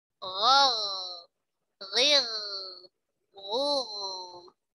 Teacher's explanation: Ghain punya sifat isti'la, ya. Pangkal lidahnya terangkat.